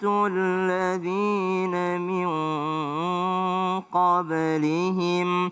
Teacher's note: Berdengung ya. Nun ketemu dengan qaf.